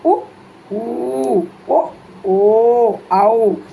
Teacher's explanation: பிறக்கின்ற எழுத்துக்கள் எவை உ ஊ ஓ அவ் அந்த வார்த்தைகளை சொல்லி பாருங்க கண்டிப்பா நம்மளுடைய இதழ்கள் குவிஞ்சு வரும் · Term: இதழ்களை குவிப்பதால்